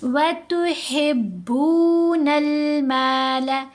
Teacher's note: ہا کو با سے ہم نے ملایا مضبوطی سے، با کے اوپر پیش، ساتھ واو ساکن، واو مدہ، تو با کو لمبا کر لیا